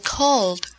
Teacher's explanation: Cuando el verbo termina en sonido vibrado, es decir, cuando al pronunciar la última letra sientes que el sonido vibra en tu garganta, entonces para pronunciar el pasado en ed se utiliza el sonido vibrado d